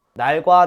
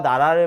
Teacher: 외국인들이 날과 나라를 들었다면 이 두 리을은 다른 소리라고 했을 거예요. 날에서 리을은 L, 나라에서 리을은 R이라고 정확하게 구분했을 겁니다